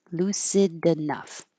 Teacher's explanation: You won't hear the d by itself, but lucid enough. You'll hear it.